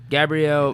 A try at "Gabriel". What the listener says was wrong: Man, you said it like he was a lady. Like it was Gabrielle Yeah, it's like Gabriel.